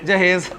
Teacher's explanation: وہ جو آواز ہوتی ہے نا ای اور آ کی، اس کو ایک ہی آواز میں پڑھتے ہیں، یعنی لٹا کے پڑھتے ہیں اس کو۔ تو اب ذرا جہاز میں آ کی آواز کو ایک کے ساتھ پڑھیں، جہیز، ٹھیک ہے، امالہ الف سے، الف میم الف اور لام اور ہے امالہ، تو جہاز سے جہیز تو امالے کا ساتھ اگر اسے پڑھا جائے تو وہ جہاز جو ہے جہیز بن جاتا ہے جی۔